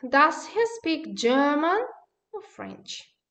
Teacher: you see the german in a rising tone french in a falling tone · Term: rise-fall intonation